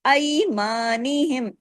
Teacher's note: اس کو اردو کی طرح نہیں پڑھنا، عربی کی طرح، آ سے ای، آواز میں نرمی سے موڑ پیدا ہو جاتا ہے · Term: یائی لین